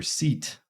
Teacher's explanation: That is the high front unrounded tense vowel, just the lowercase letter I for seat.